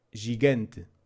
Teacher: It works the same way in English, but in Portuguese it loses the slight D sound before the J